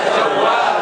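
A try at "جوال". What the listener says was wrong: Kita belajar makhraj sedikit ya. Jawal ya. Ucapkan wawu bukannya w. Wa. Bukannya wa tapi wa. Wa. Wa khalaqa minha والضالين وضحاها ولا الضالين ya. Ya, jadi bukannya wa.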